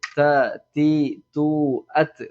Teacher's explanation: ഈ മുൻപല്ല് ഭാഗം, ഈ മുൻപല്ല് നേരിട്ട് ഇങ്ങനെ വരുമ്പോൾ അതിന്റെ മുരട്ടിലേക്കാണ് നമ്മുടെ നാവിന്റെ തല ഇങ്ങനെ തട്ടേണ്ടത്. എന്നിട്ട് വളരെ സോഫ്റ്റ് ആക്കിയിട്ട് കട്ടി കുറച്ചിട്ട് ത, തി, തു, അത്, മലയാളത്തിലുള്ള തത്ത എന്ന് പറയുന്ന ത എന്ന് ഒരിക്കലും ഉച്ചരിക്കരുത്.